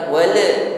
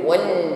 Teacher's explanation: lam sukun jangan dipantulkan ya, alirkan bunyi hurufnya wal bukan wala jangan terpantul, alirkan wal.